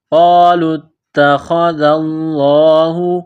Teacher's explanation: اللَّهُ، ذال کو پڑھتے وقت زبان تھوڑی سی باہر نکالیں گے، لفظ اللہ کے نام سے پہلے زبر ہے، لفظ اللہ کے نام کو موٹا کرنا ہے